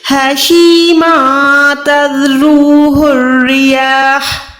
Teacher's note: حشیما تذروہ الریاح، ہا ساکن ہو جائے گا، یہ جو ہا ہے وہ حلق کے درمیان والا ہے، یہاں پر تذروہ پہ جو ہا ہے وہ حلق کے نیچے والے حصے سے ہے